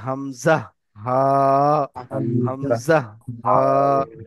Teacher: তো কণ্ঠনালীর একদম শেষ দিয়ে উচ্চারণ হবে